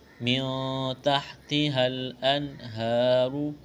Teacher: یہاں نون ساکن کے بعد تا ہے، اخفا کریں گے، آواز ناک پہ چھپائیں گے